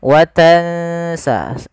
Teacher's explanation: kita langsung bacakan nunnya ke makhraj daripada huruf sin. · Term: ikhfa